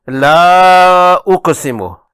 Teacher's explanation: الف مدہ اور مضموم حمزہ سے مد منفصل ہوگی